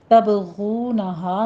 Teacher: تبغونہا میں با پر قلقلہ کریں گے، غین کو پر پڑھتے ہوئے ہونٹوں کو گول کر لیجئے